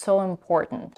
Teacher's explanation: So she doesn't say, I think it's So it's so important. She doesn't even pronounce the diphthong O in the word so, but she's merging it with the next word important. And when she's doing here, she's dropping the first lax I in the word important, and it sounds so important.